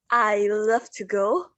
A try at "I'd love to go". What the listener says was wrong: No, I'd. You need to pronounce the D. So remember, you need to pronounce the D because you're referring to the modal verb would. So you need to pronounce it nice and strong. I'd love to go.